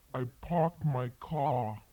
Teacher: a typical New York accent in which the R sound after vowels is dropped